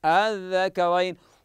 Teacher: الثاني تسهيل الهمزه الثانيه مع القصر نقرا الذكرين الان لاحظ معي الثانيه تنطق بين الهمز والالف